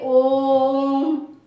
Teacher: प्लुत स्वर जो है ह्रस्व स्वर की अपेक्षा जब प्लुत स्वर में 3 गुना समय लगता है इसे प्लुत स्वर कहते हैं।